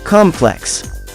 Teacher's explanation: if you're referring to a structure or building the stress is on the first syllable of the word